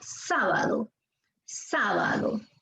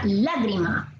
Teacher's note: Nos dice que llevan la fuerza de voz en la antepenúltima sílaba. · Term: esdrújulas